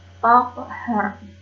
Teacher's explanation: Takhar itu tajwidnya qalqalah sugro ya, karena ada huruf qalqalah yang qaf yang berharokat sukun dan posisinya di tengah kalimat. Cara membacanya dipantulkan secara ringan.